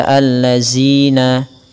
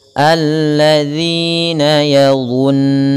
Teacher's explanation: hati-hati dalam melafalkan zal, jangan sampai terbaca dengan huruf zai. Jangan dibaca allazina, tapi dia dza.